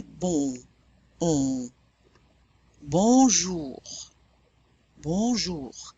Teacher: If you drop that down, you round your lips, drop the soft palate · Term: nasal vowel